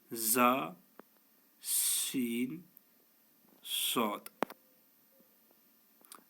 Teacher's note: یعنی زبان کی نوک جب نیچے دانتوں کے اندرونی کناروں سے لگے تو یہ حروف ادا ہوتے ہیں۔ زا سین کو باریک اور صاد کو موٹا پڑھا جائے گا، نیز ان حروف میں سیٹی کی آواز آنی چاہیے۔